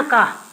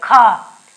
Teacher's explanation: देखो, जबकि जब हम अल्प प्राण पहला और तीसरा, पांचवा का, तो उसमें हवा कम निकल रही थी ना, का, और खा को बोलते समय ही क्या है, हवा अधिक लग रही है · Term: महाप्राण